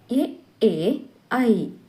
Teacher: ಅಕ್ಷರಗಳು ಹುಟ್ಟಲು ಕಂಠ ಮತ್ತು ತಾಲು ದವಡೆಗಳೆರಡರ ಸಹಾಯ ಬೇಕಾಗುವುದರಿಂದ ಇವು ಕಂಠಾಲು ಅಕ್ಷರಗಳೆನಿಸುವವು